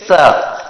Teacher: ये जो सामान्य स है जिसका उच्चारण हम दांत के जीभ स्पर्श होते तब होता है, जैसे स। तो ये स, इन सभी का उच्चारण स्थान जो है वो क्या है, आपके दंत यानी दांतों के सहयोग से ही ये उच्चारण स्थान, ये उच्चारण होता है।